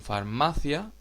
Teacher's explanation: la sílaba tónica en farmacia es ma es una palabra llana terminada en vocal por eso no tiene